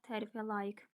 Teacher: Tərifə layiq K səsidir. Q səsi yoxdur.